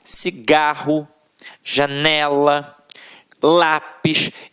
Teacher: a sílaba que a gente proferiu com mais força sempre esteve na penúltima sílaba. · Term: paroxítonas